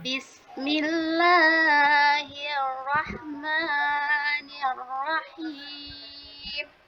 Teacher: Ditahan Bu ya 2 harakat. Nirrahim ditahan 2 harakat. R-nya double. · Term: double R